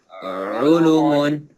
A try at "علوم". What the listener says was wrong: No, there is waw madda. We long here.